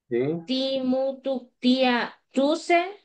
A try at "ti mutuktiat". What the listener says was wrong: Sí, solo que a los plurales no se les oyó la T, ¿verdad? Ti mutuktiat, ang mutuktiat, mutuktiat. Siempre con la T, así, porque si no suena en singular.